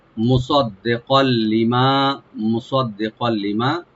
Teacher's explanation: কাফের উপর যে তানবিন আছে, তানবিনের পরে যেহেতু লাম আসছে, এখানে আমরা ইদগাম করব গুন্না ছাড়া, উইদাউট গুন্না।